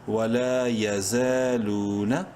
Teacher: الف مدہ ہے، لام کو ایک الف برابر لمبا کریں گے